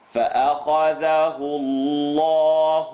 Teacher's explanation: The letter before the lam in Allah, la mushaddad lafzul jalala. The u makes the lam in Allah heavy.